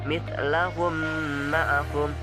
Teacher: Cara membaca idgham mislain adalah dengan cara menyuarakan suara mim rangkap atau tasjid dengan samar-samar dengan panjang 2 harokat